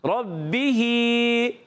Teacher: با مشدد ذرا رک کر ادا کریں گے